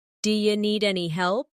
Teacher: Here, do you sounds like d'ya.